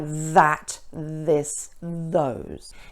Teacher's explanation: you need to feel the vibration against your teeth because it's a voiced sound